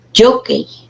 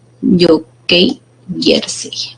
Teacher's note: la mayor fuerza de voz en la penúltima sílaba